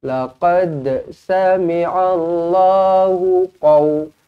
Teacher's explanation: Yang mana qalqalah sughra ini yang saya gariskan ni, huruf dal yang bertanda mati, kita kena lantunkan dia kerana dia adalah huruf qalqalah.